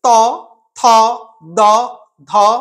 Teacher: এই বর্ণগুলো উচ্চারণ করার সময় জিহা কি করছে না একদম জিহা গিয়ে দাঁতে বাধা দিচ্ছে, তাই এই বর্ণগুলিকে বলা হয় দন্ত বর্ণ।